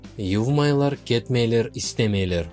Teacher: ударение на аффиксы «ма-ме» не падает. Оно падает на предыдущий слог.